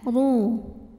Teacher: Cara bacanya ditebalkan, pangkal lidah dinaikkan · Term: tafkhim